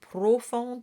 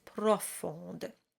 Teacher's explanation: the first O in profonde is an open O. It's not profonde, it's profonde.